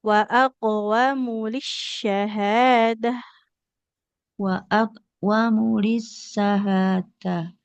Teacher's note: hurufnya mimnya domah di depannya tidak ada wau. Maka enggak boleh kita baca panjang huruf mimnya.